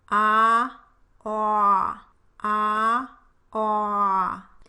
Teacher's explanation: The Aw sound as in bought is produced with the lips rounded.